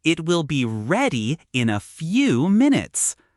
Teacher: The stress is on ready and few. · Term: stress pattern